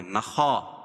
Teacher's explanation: خا کو موٹا پڑھیں گے کیونکہ حروف مستعلیہ میں سے ہے